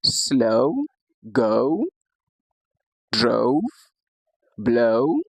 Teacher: Now the sixth div tongue we have is a combination of schwa and the short u. This gives us the pronunciation o o.